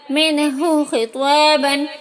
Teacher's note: یہاں نون ساکن کے بعد ہا آیا ہے، اس لیے نون کو ظاہر کر کے بلا غنہ کے جلدی پڑھیں گے